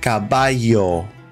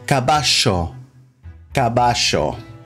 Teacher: In other countries, they'll say caballo, caballo. But in Argentina and Uruguay, this is pronounced almost like a SH